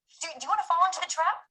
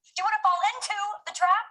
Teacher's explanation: In the first one, she accentuates the action of falling, while on the second one, she accentuates into, trying to highlight what you are falling into, referring in this case to the relationship Rachel had with Ross. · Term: tonic syllable